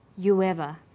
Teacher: you ends with ooh a high back vowel · You ends with oo, a high back vowel. So it links with linking type 2, the W sound. It becomes you ever.